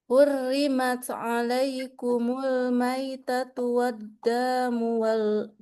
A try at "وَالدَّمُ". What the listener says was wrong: Dannya jangan panjang. Waddamu walahmul.